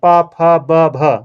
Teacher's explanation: ये चार अक्षर आपके ओष्ठ से उच्चारित होते हैं